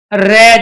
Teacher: और कंपित या लुंठित रे, क्यों, जब हम रे का उच्चारण करते हैं, रे जैसे उच्चारण किया हमारी जीभ लुढ़क जाती है, तो जीभ के लुढ़कने की वजह से ही हम रे का उच्चारण कर पाते हैं।